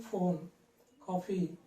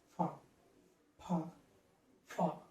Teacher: ఈ శబ్దము పై దంతాలను కింద పెదవును ఉపయోగించి ఫోన్, కాఫీ ఆ విధంగా మనం పలకాలి. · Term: దంతోష్యం